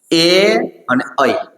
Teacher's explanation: ગળા અને તાળવા દ્વારા ઉચ્ચારાય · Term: કંઠ્ય અને તાલવ્ય